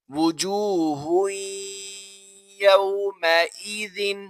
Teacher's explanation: دو پیش کی تنوین ہے، آگے یا آ رہا ہے حروف یرملون میں سے، اور یا کا آپ کو پتا ہے کہ یا پر غنہ کریں گے ہم